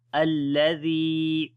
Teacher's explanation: So this lam we connect with the alif and we will put a fatha sign on the alif from ourselves for connecting as we say alladhi. Zal we read in soft sound and this is ya madda here. Alladhi we long.